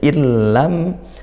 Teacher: tanpa dengung ya tidak didengungkan langsung masuk ke lam dan lamnya karena idgham maka bertasdid ya dibaca bertasdid illam mim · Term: idgham bila ghunah